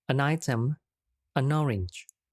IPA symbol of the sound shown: ən